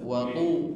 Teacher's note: Ta tebal, wa tu tebalkan dan tidak boleh ada aliran nafas di sana.